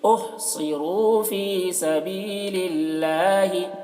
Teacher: اللہ کا لام کو باریک پڑھیں گے کیونکہ اللہ کے لام سے پہلے زیر ہے